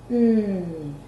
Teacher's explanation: It's voiced, and it's also a nasal sound.